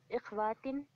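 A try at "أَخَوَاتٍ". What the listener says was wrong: इखवा तो भाई के मुजक्कर के साथ हम नीचे कसर लगाते हैं, मोनस के लिए हम जबर लगाते हैं फतह। अखावातीन।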